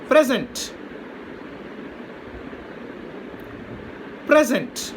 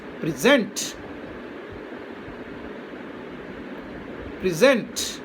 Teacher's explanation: So present here means gift. So when it is used as a noun, the accent is on the first syllable. Now when it is used as verb, the accent changes to the second syllable.